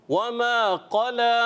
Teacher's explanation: قلا میں قاف کو پر رکھنا ہے، موٹا رکھنا ہے